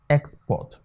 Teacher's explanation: if it's as a noun the first syllable will receive the stress second one will be unstressed